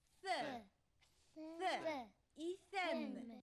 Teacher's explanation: С похож на С. Только кончик языка между зубами.